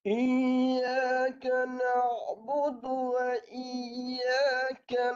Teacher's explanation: bagi jelas huruf ya tu Tengah lidah ditinggikan